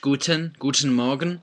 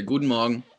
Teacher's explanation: Sometimes you'll hear the T pronounced, Guten Morgen. Sometimes you hear it sort of slurred together